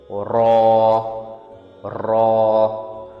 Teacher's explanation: اس میں ٹنگ ٹپ roof of the mouth کے پاس لگتی ہے. ایک وائس اور رولڈ ساؤنڈ ہے اسی لیے اس سے ہلکی سی ریٹل اور وائبریشن ملتی ہے جب ٹنگ اوپر کی طرف رول کرتی ہے